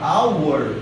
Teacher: eu não vou pronunciar o H. Então é como se eu tivesse o som de vogal